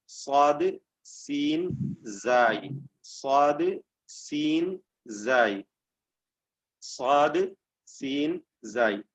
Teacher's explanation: അതിന്റെ ഇടുങ്ങിയ സ്ഥാനത്തിൽ കൂടെ അതിന്റെ സഞ്ചാരം ഉണ്ടാകുമ്പോൾ, ആ അക്ഷരത്തിന്റെ ഉച്ചാരണം വരുമ്പോഴുണ്ടാകുന്നതായ ഒരു ശബ്ദമാണ് സഫീർ. സഫീർ ഞാൻ പറഞ്ഞിട്ടുണ്ട്, ചൂളം വിളി എന്നൊക്കെയാണ് അതിന്റെ അർത്ഥം വരുന്നത്.